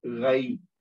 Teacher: یہاں پہ یا ساکن سے پہلے زبر ہے تو یہاں پہ بھی یا لین ہو گئی